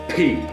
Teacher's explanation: p is releasing the energy and putting the uh air pressure out very rapidly uh and and it's it's a non-voiced it doesn't have a